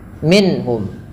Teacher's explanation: yaitu dengan memperjelas bunyi suara nunnya ketika bertemu dengan huruf-huruf halaq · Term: izhar halqi